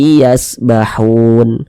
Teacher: Hun dibaca panjang ini namanya adalah Mad Arid lisukun